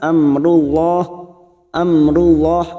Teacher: am mim sukun bertemu ro Idhar syafawi dibaca jelas Amrullah Amrullah lam jalalah yang didolidumah kita baca tafkim atau tebal